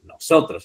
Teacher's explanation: pero aquí está la tónica en la penúltima sílaba